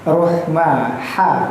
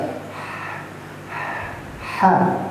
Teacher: Huruf ha kecil itu makhrajnya terletak di pangkal tenggorokan bagian atas.